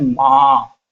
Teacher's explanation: यह जो मात्रा आपकी आ की मात्रा लगी है, अब इस आ की मात्रा का उच्चारण जो हो रहा है इस चंद्र बिंदु के कारण नाक और मुख दोनों से हवा निकलने से इसका उच्चारण संभव हो पा रहा है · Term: अनुनासिक स्वर